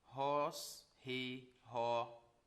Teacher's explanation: Dentro dessa observação para a qual eu queria chamar a sua atenção, você percebe aqui que eu tenho uma aspiração áspera e eu também tenho um acento